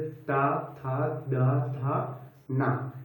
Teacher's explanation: इसमें आप लोग देखिएगा जो हमारी जीभ है वो दांत के पिछले हिस्से को स्पर्श करती है। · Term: दंत वर्ण